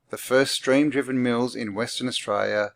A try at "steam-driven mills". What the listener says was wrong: Did he just say stream? It sounds like he says stream-driven mills, not steam-driven mills. Yeah, I'm sure he says stream.